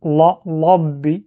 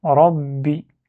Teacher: Là, attention, des fois, il y a ceux qui lisent la, labbi, c'est pas le son la ou la en français, non, c'est pas ça. C'est le son ra, c'est le R roulé. Rabbi, c'est pas ra, c'est pas le R, mais c'est un R roulé.